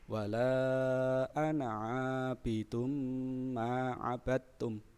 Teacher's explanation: Bacaan tanwinnya melebur ke huruf mim, sehingga dihukumi idgham bi ghunnah, dibaca dengan dengungan